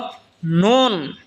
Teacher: নুন যেহবার আগা তার বরাবর উপরে তালের সঙ্গে লাগে উচ্চারণ হবে নুন